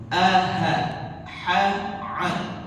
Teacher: Dia ada di halq, ada di wastal halqi. Tenggorokan bagian tengah. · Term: huruf tenggorokan